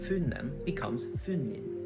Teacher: the E sound is often replaced with an I.